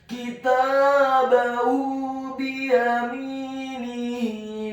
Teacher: Kitabahu biyaminihi, kata biyaminihi, huruf ba-nya dibaca tipis kasrah satu harokat, huruf ya-nya dibaca tipis fathah satu harokat, huruf mimnya dibaca kasrah dua harokat karena setelahnya ada huruf ya sukun. Kemudian huruf nunnya dibaca tipis kasrah satu harokat dan huruf ha-nya dibaca tafkhim tebal kasrah dua harokat karena harokatnya tegak.